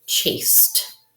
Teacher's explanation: This past tense suffix, chased. Remember the ED can make the T sound